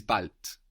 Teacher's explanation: Bald is spelled B-A-L-D. A D on the end of the syllable in German is pronounced more like a T.